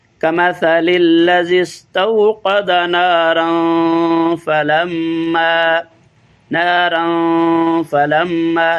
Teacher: اخفا غنہ کریں گے، یعنی کمثل الذی استوقد نارا فلما، ناک میں آواز کو پیدا کریں گے